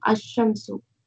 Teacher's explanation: When al is prefixed to a noun beginning with a solar letter, the alif of al is assimilated to the solar letter. Example, the lam of al is assimilated to the solar letter